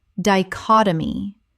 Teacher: Four syllables with the stress on the second.